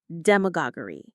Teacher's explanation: The stress is on that gog syllable.